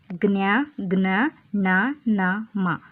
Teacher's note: ಕೊನೆಯ ಸಾಲು ಅನುನಾಸಿಕ ವಾಗಿದೆ ಜ್ಞ ಜ್ಞ ಣ ನ ಮ ಇವು ಅನುನಾಸಿಕ ನಾಸಿಕದ ಸಹಾಯದಿಂದ ಉಚ್ಚಾರ ಮಾಡುವುದರಿಂದ ಇವುಗಳನ್ನು ಅನುನಾಸಿಕ ಅಕ್ಷರಗಳೆಂದು ಕರೆಯುತ್ತೇವೆ